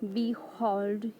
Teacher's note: Here be is unstressed and hold is stressed. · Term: Iambic foot